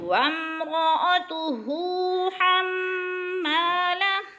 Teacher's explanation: وامرأتہ حمالہ، حروف حلقی میں سے، ما میم مشدد، حم مشدد ہے، میم کو سختی سے پڑھیں گے۔ ما پہ الف مدہ ہے اور الف مدہ کو کھینچ کر پڑھنا ہے.